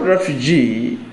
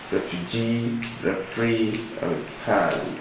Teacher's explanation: stress is on the last syllable, third syllable